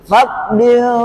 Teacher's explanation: Pastikan sembunyikan dalam di bibir. Fadlin, tidak di hidung. Fadlin, ya, bergegar di bibir. Kerana tanwin lam itu kita sembunyikan dalam huruf fa. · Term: ikhfa